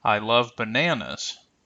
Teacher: the focus word and the International pattern so in this case we have that rising and deep falling intonation